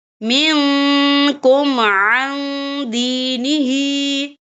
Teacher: نون ساکن کی آواز کو ناک میں چھپائیں گے۔ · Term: اکفا